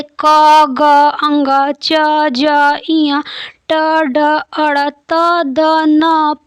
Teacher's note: जिनके उच्चारण में श्वास पूरब से अल्प मात्रा में निकले और जिनमें हकार जैसी ध्वनि नहीं होती है, उन्हें अल्प प्राण कहते हैं। प्रत्येक वर्ग का पहला, तीसरा और 5वां वर्ण जो होता है वो अल्प प्राण में आ जाता है।